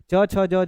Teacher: स्पर्श संघर्षी होता है जो छूने और रगड़ने से